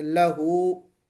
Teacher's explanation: لہو کا لام اس کے اوپر زبر ہے لیکن ہم اس کو باریک پڑھیں گے